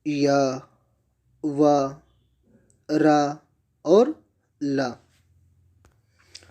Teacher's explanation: ईषत् स्पष्ट में क्या होता है, जो हमारी जिह्वा होती है वो उच्चारण स्थानों को थोड़ा सा स्पर्श करती है